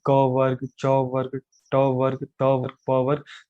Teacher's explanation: क की बात करते हैं तो ये गले से शुरू होता है, च ऊपर की तरफ, ट थोड़ा और ऊपर की तरफ, त दांतों पे आ जाता है और प आकर होठों पे खत्म होता है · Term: उच्चारण स्थान